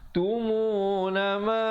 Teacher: Tumuna ma dibacakan 4 atau 5 harakat